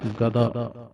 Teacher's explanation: ਗਦਾ ਪੋਲਾ ਕਹਿਣਾ ਜੀ ਗੱਦਾ ਨਹੀਂ ਕਹਿਣਾ